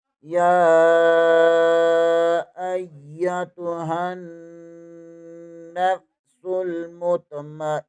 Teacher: یا کے اوپر کھڑی زبر ہے، اوپر چھوٹی مد بھی ہے، اسے 2.5-3 الف کے برابر کھینچ کر پڑھیں گے۔ حمزہ زبر کو یا کے ساتھ ملائیں گے، یا مشدد ہے، اسے 2 بار پڑھیں گے۔